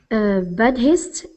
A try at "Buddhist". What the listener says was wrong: Sorry, and just to help, the H is silent. Buddhist.